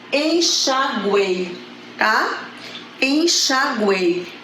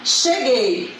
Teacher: essa sequência semivogal vogal + semivogal na mesma sílaba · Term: tritongo